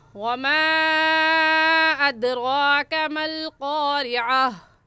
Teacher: इसको 3 अलिफ के बराबर खींच कर पढ़ेंगे, ना इससे कम और ना ही इससे ज़्यादा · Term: मद्दे मुनफसिल